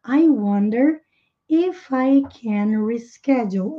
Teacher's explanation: Então, a gente não faz nem a entonação de pergunta.